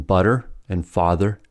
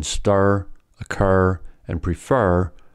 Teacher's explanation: For example, in butter and father, it is unstressed, but in stir, occur and prefer, /ər/ is stressed